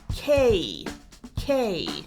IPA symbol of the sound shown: keɪ